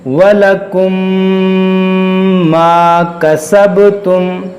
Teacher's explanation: अब यहाँ ध्यान दें, यहाँ एक मीम साकिन है, और मीम साकिन के बाद एक और मीम है, इसलिए यहाँ ईदगाम-ए-शफावी का नियम लागू होगा, यानी हम गुन्ना करेंगे। · با حروف قلقلہ ہے اور ساکن ہے، تو اس میں قلقلہ کریں گے